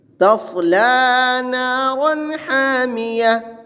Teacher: صاد پر پڑھی جائے گی اور را ظاہر کر کے پڑھیں گے